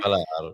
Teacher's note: you say falar, you stress lar